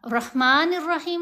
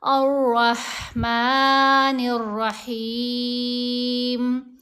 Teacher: چونکہ را کے اوپر تشدید ہے تو الف کو را سے ملایا جائے گا